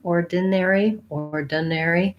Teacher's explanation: the important thing is that i'm short and light and unstressed on that middle syllable there